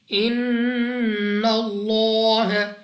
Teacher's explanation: غنہ سے کیا مراد ہے کہ آپ نے اپنی آواز کو ناک میں لے جا کر پڑھنا ہے، اور اس کی مقدار بھی 2 سیکنڈ کے برابر آپ سمجھنے کے لیے کہہ سکتے ہیں ان اللہ، لام اف اللہ، اور لام اف اللہ سے پہلے حرف پر زبر، تو اس لام اف اللہ کو موٹا یعنی پر پڑھیں گے منہ اور آواز کو کھول کر